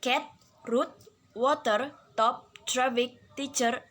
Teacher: The tip of the tongue is in contact with the alveolar ridge, and the air comes out of the lungs through the oral cavity as it is stopped by the articulator. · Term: voiceless alveolar stop